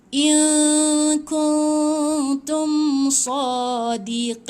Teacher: dia kena gantungkan sikit lidah. Jangan sebut tepat pada nun. Lepas tu bersedia sebut ta tu. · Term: ikhfa